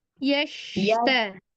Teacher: Jangan pakai desisan sin, tapi makhrajnya di tengah lidah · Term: shin